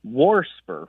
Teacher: I hear that extra R get added occasionally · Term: R insertion